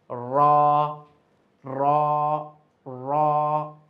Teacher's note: জিবার আগার পিঠটা গিয়ে উপরের তালের সঙ্গে গিয়ে রাখবে। র বলতে গেলে কিন্তু আবার ঠোট গোল হবে না। ঠোট স্বাভাবিক অবস্থায় থাকবে।